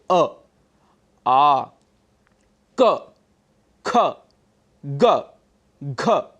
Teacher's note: अ और कवर्ग का उच्चारण स्थान कंठ है। कंठ, जिसे हम एपिग्लॉटिस कहते हैं, वहां से इन सभी वर्णों का उच्चारण होता है, जैसे अ, आ, क, ख, ग, घ इत्यादि।